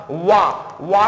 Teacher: वकारस्य दंतोष्ठम यानी दंतोष्ठ वर्ण होता है, कौन सा, वा का उच्चारण स्थान क्या होता है, दंतोष्ठ होता है।